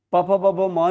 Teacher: प फ ब भ म जो है ये आपका होठ से उच्चारण होता है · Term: ओष्ठ वर्ण